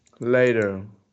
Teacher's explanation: so we pronounce t as flap t